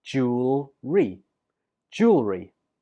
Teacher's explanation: it's important to know that you put the stress on the first syllable